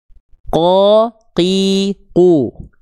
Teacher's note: Huruf qaf pangkal lidahnya nempel ke langit-langit yang lunak saja.